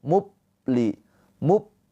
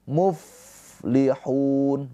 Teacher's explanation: sifat hames yaitu ada aliran nafas. Muf muf.